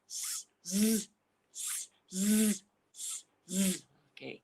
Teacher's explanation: when you say z, the tongue is like touching a bit more the roof of your mouth because you are making it hard. You know, you are pushing more air out of your mouth. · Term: hard sound